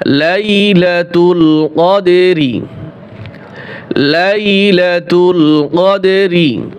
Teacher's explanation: কদর শুধু র উচ্চারণ হবে, রয়ের সাথে যে জবর জের পেশ থাকবে, এই হরকতগুলি ওয়াকফ করলে উচ্চারণ হয় না, শুধু হরফটা উচ্চারণ হয়। কফ দাল জবর কদ, কলকলা হবে, এরপরে র উচ্চারণ করব।